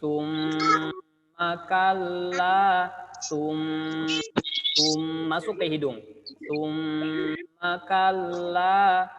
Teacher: Mim bertasdid, suaranya ditahan dan dimasukkan ke dalam hidung atau gunnah ya. Jadi suaranya tidak boleh buru-buru.